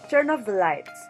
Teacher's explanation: in glides, the stressed syllable is the last syllable in the sentence, and there is movement within the syllable.